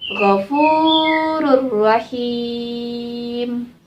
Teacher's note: tanwin bertemu dengan huruf idgam bilagunnah tetap dimasukkan dan tidak berdengung